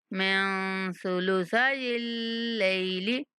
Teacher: نون پر اخفا کریں گے، سا کو نہایت نرمی کے ساتھ پڑھیں گے